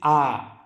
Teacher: जिस स्वर के उच्चारण मुख से सबसे अधिक खुलता है अर्थात पूरा खुलता है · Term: विवृत स्वर